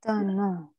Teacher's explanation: O-N-S. S will not get pronounced.